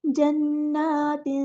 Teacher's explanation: یہاں پر تنوین کی نون کو چھپا دیں گے، اخفا کریں گے. جنات، آواز پر توجہ دیں، غور سے سنیں، اس طرح آپ کی اخفا کی آواز نکلنی چاہیے.